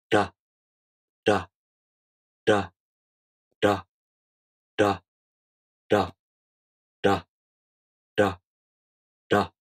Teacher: The Japanese R is officially known as a “Voiced Alveolar Tap” sound. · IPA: [ɾa]